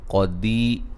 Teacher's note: قدی قاف کو موٹا، دی یا مدہ ہے